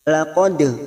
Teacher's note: dal sukun qalqala sugro karena mati asli di tengah kalimat, jangan lupa dipantulkan